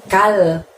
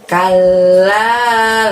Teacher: Ada tasydid lagi teman-teman. Di huruf lam bertasydid, maka lamnya harus terdengar 2 huruf L ya